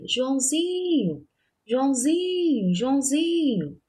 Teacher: A sílaba que saiu com mais intensidade e o som saiu mais prolongado na palavra Joãozinho foi o zin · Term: sílaba tônica